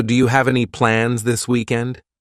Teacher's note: Rising intonation to show it's a question